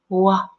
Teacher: the W has no closure of the lips and the teeth.